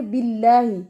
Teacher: اللہ کا نام یہاں پہ باریک ہے، کیوں؟ کیونکہ اس سے پہلے کسرہ ہے